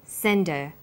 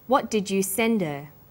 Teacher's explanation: send her send is the strong form and her is weak because her is not stressed we drop the initial H sound